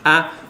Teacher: Trap, a, is a low front vowel.